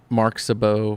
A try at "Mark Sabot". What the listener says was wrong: You said it. You said it like Mark Sabot. Like it was all one word. I'm like, that is not someone's name.